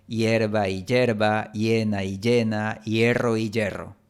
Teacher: En algunos lugares, como España y la frontera entre México y Estados Unidos, la vocal I y la consonante Y tienen sonidos muy similares o incluso exactamente el mismo sonido cuando están antes de una vocal abierta